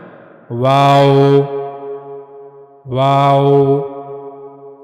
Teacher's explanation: वाव को अदा करने के लिए दोनों होठों को मुकम्मल मिलाए बगैर गोल घुमाना यानी दोनों होठों को गोल किया जाएगा।